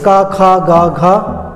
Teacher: क वर्ग का उच्चारण कंठ से, यानी कंठ में रुकावट होती है, वहाँ पर स्पर्श होती है ध्वनि